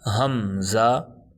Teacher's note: حمزہ کو جھٹکا دے کے پڑھیں گے